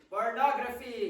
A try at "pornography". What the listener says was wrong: Very good. Isn't that good?